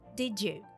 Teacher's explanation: The combination of letters D plus Y in did you gives a new sound, J